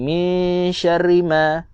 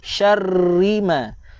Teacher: maka bacalah dengan kadar sabdu syarrima, bukan syari